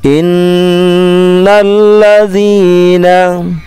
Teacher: hati-hati di zi-nya panjangnya dua huruf